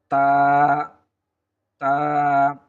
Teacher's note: জিহ্বার আগাটা উপরের দাঁতের গোড়ার সঙ্গে লাগিয়ে দিলেই আমরা তা হরফটি পেয়ে যাব